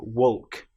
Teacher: in both of these words, walking and talking, we have the L which isn't produced. We don't hear the L, walk.